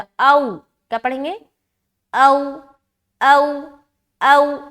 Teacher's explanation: तो ओ नहीं पढ़ना, ये मजहूल हो जाएगा।